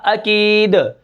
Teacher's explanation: عقید سے وقفن عقید، رکیں گے کس طرح، عقید، ٹھیک ہے. دال کو ہم ساکن جب کریں گے تو اس کے اندر قلقلہ ہوگا